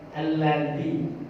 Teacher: Dari ujung lidah gesekan dengan menyentuh gigi seri atas yang bagian ujung. Ujung itu yang berarti yang di bawah di sini.